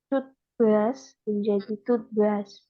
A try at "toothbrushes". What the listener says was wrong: toothbrushes. Toothbrushes, ada ES-nya dan ini harus dibaca ya. Ini itu dipisah.